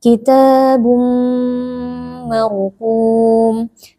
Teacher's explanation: ada Alif sebelumnya berharakat fathah dibaca panjang dua harakat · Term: Mad Thobi'i